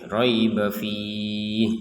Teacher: Untuk riib kita tidak panjangkan karena digabungkan ke fih.